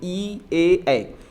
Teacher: ये आगे से बोले जाने वाले शब्द है, जीभ के आगे भागे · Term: अग्र स्वर